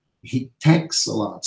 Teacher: the T in texts being elided in the middle of a complicated consonant cluster. So instead of saying texts, you just elide, you do away with the T in the middle.